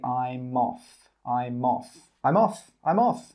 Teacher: And the 'I'm' and the 'off' come together and we say 'I'moff.'